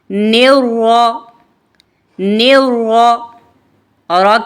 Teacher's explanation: जुबान की नोक की पुश्त को ऊपर वाले दांतों के मसूड़ों से लगाकर मोटी आवाज में पढ़ेंगे। र मुशद्द है।